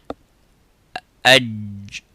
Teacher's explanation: It's the sound stops completely and touches the bone, the roof of the mouth. قعر اللسان and say aj. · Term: jim